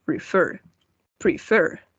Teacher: El golpe de voz va en la última sílaba.